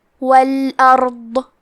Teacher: ضاد کو ہم زبان کے کروٹ اور اوپر کے داڑھوں کی جڑ سے پڑھیں گے. ضاد حروف التفخیم میں سے ہے تو ہمیں یہ حرف کو موٹی آواز میں پڑھنا ہے.